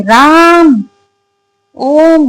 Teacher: उच्चारण के आधार पर तीसरा स्वर प्लुत स्वर। इनके उच्चारण में दीर्घ से भी अधिक समय लगता है, यानी सबसे ज्यादा समय लगता है इनके उच्चारण में।